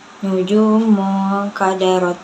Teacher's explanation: Nujumu itu ikhfa hakiki karena nun sukun bertemu dengan huruf ikhfa yaitu kaf. Cara bacanya didengungkan.